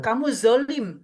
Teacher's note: dia di ujung aja, belakangnya nggak ditebelin. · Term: salah makhraj